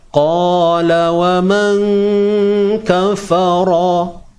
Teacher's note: Qa di sini tebal dan dibaca 2 harakat. Sebab apa? Sebab ada alif mat kat sini.